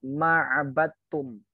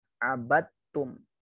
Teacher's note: Ini idghamnya kamil. Masukkan langsung ke huruf ta. Dalnya ndak usah dianggap. Abattum. Dal bertemu dengan ta. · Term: idgham kamil